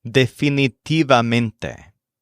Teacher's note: This word stresses mente, like all these other words, but it might help to think of a secondary stress on tive.